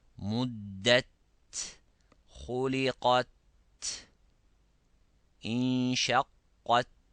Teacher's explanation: we have to press hardly on the gums, on the tip of the tongue behind the incisors. Press hardly and then release, let the air coming. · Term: ta